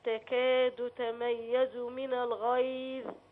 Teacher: يعني ماطولش في الضمه قوي لا اشبع الضمه